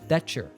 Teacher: That you're in there becomes that you're in there. The combination of the letters T plus Y gives us a ch sound.